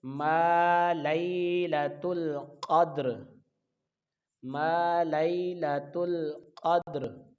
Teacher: قاف کو دال کے ساتھ ملائیں گے تو یہ دال حروف قلقلہ ہے، قاف کو جب دال کے ساتھ ملائیں گے تو آواز لوٹ کر آئے گی